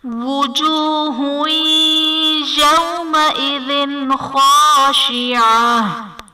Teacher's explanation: وجوہ یومئذ میں ہا پر دو پیش کی تنوین ہے، تنوین کے بعد حروف یرملون میں سے یا ہے تو یہاں پر ادغام مع الغنہ کا قاعدہ ہوگا، یعنی تنوین میں ہم غنہ کر کے پڑھیں گے